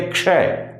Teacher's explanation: क से शुरू करेंगे क को हल्का लेंगे क्ष और श को पूरा बोलेंगे